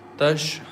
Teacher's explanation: change noon fatha to sakin and stretch the sound for 4 or for 6 counts